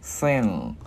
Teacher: mình ngân cái chữ ngờ ra